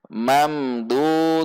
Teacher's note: Jika ingin diwasal atau disambung dengan ayat selanjutnya, yaitu ayat 31 surah Waqiah, maka tanwin ini dimasukkan kepada huruf wawu, sehingga dibaca mamdudiwa. Harus dibaca idgham bi gunnah atau dengung.